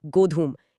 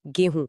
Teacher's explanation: गोधूम में जो ध था वो बोलते बोलते ह बन गया और जो म की ध्वनि थी वो नाक से होते हुए चंद्रबिंदु में बदल गई।